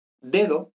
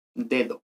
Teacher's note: Y si, por ejemplo, yo digo, no estoy hablando y de repente digo dedo, pues esa primera D es oclusiva porque va tras pausa, pero luego la segunda D, como es en los demás contextos, es aproximante